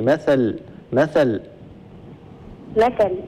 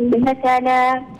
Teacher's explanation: بما ان التنوين هنا التنوين بالكسر فنقف اللام نقف عليها بالسكون